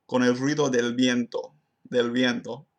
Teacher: I also successfully assimilated the N into a dental sound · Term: dental N